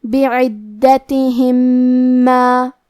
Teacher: کلمت ما، یہاں حکم ہے ادغام تو ہم پہلے میم کو دوسرے میم میں ملا کے ایک ہی میم غنہ اور تشدید کے ساتھ یہ حکم کو ادا کریں گے